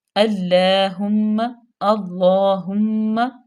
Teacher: اللہم صلی علی، حمزہ پہ زبر ہے، لام مشدد، لام پہ کھڑے زبر، اس کو تھوڑا سا کھینچے کہ بھی 2 حرکات کے برابر